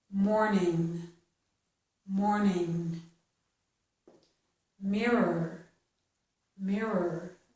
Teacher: This OR sounds the same as ER at the ends of these words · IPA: / əɹ /